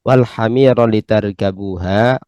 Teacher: Tapi ketika fathah maka ra-nya berfathah maka tidak diidghamkan.